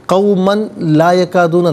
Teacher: قومن میں میم پر دو زبر کی تنوین ہے، اسے لام کے ساتھ ملائیں گے اور لام کی آواز کو ادا کیا جائے گا